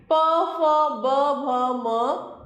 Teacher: प वर्ग, यहाँ पर हम होंठ से उच्चारण करते हैं।